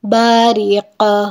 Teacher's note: قاف حروف قلقلہ ہے اس لیے اس کو وقف پہ ہلایا جائے گا